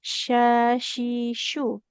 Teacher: Jadi tengah lidahnya menempel ke langit-langit. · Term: huruf shin